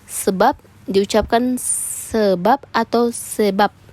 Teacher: terrealisasikan bunyi sebagai bunyi B atau P apabila berposisi sebagai koda pada sebuah silabe